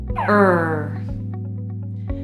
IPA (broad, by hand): r